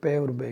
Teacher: position of the lips, होठ का भी इसमें काफ़ी रोल होता है कि मुंह को अगर हम दोनों होठों को अगर जोड़ के बोलते हैं तो पी बे की आवाज़ आती है